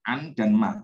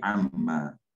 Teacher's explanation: Lalu nunnya itu diidghamkan ya, dimasukkan, dileburkan ke ma.